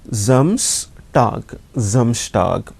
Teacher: Again S plus vowel, that S sound changes to Z sound. So it is Z, Samstag, Samstag, or we can also say Sonnabend, Sonnabend.